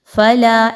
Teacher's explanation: لام زبر الف لا، حرف مدہ ہے، 2 الف کے برابر لمبا کرتے ہوئے پڑھیں گے